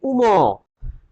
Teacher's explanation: উম দেখো উচ্চারণ করতে গেলে একটু নাকে বেঁধে যাচ্ছে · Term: নাসিক্য